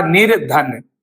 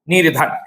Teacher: तो यहां पर आपका विसर्ग हट जाएगा और उसकी जगह पर रा का साउंड आ जाएगा। निर धन ऐसे ही नी धन वल में देखिएगा कि विसर्ग से पहले छोटी इ है और बाद में व है।